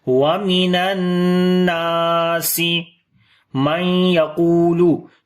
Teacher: تو نون ساکن کے بعد یا آگے یہاں پر ادغام غنے کے ساتھ کریں گے